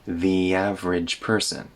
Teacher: The average has a little y in the middle.